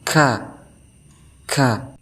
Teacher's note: Yang pertama dia dibaca samar atau hamas, yang kedua dia keras atau syiddah, yang ketiga dia merendah atau istifal, dan yang keempat dia dibaca terbuka atau infitah. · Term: huruf kaf